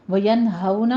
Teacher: ہو میں واو لین ادا کرنا ہے ہونٹوں کو نا تمام گول کرتے ہوئے